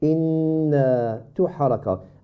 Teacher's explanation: You forgot to stretch the alif, which is mad al-tabi'i. You do the ghunna, inna, yeah, it's okay, but you need to stretch the alif as well.